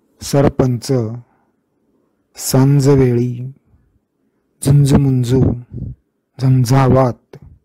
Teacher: हे असे दंत्य तालव्य उच्चार मराठीत असतात संस्कृत मध्ये नसतात